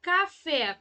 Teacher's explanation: Qual é a sílaba mais forte fé então é a sílaba tônica